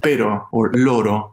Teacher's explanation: just one r between vowel sounds is flipped or just a tap